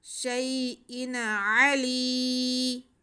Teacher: لام کے نیچے زیر یا ساکن، تو یہ یا مدہ ہو گیا. اسے ہم کھینچ کے پڑھیں گے. شیئن علی اینڈ میں ہم نے وقف کرنا ہے.